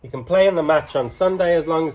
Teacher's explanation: You only hear the content words, which are play, match, Sunday, injure, evening.